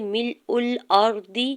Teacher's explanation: را ساکن سے پہلے حمزہ کے اوپر زبر ہے تو را ساکن کو بھی پر پڑھیں گے